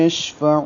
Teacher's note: ذا الذی، یا مدہ ہے 2 حرکات لمبا ہوگا، یشفع میں شین میں تفشی ہے، آواز منہ میں پھیلے گی